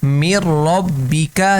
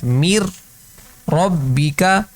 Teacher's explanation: اب را آ رہا ہے تو ہم یہاں پر ادغام کر رہے ہیں لیکن غنہ نہیں ہو رہا